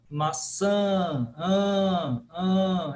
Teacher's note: perguntaram em cima da pergunta da da ecista porque parece muito um som de n só que sem a língua nos dentes Correto sim sim é um som nasal